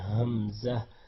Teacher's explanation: گلے کے آخری سے حصے سے ادا کرنا ہے. اور اس کے بعد ہے عین, اس کی بہت زیادہ پریکٹس کی ضرورت ہے.